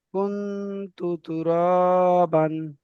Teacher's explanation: তাহলে এখানে নুন সাকিনের পরে হরফে ইকফার 15টি অক্ষরের মধ্যে থেকে তা এসেছে, তাই নুন সাকিনকে একালি পরিমাণ গুণনা করে পড়তে হবে